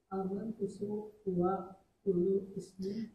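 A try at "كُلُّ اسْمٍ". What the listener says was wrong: bacanya kullusmin. Hamzahnya itu dibuang, hamzahnya dibuang. Hamzah wasal dia. Dicoret.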